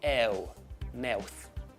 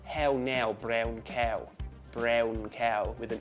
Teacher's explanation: It becomes ew, like you're starting on an e. If you start on e, ew, mouth. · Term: ow sound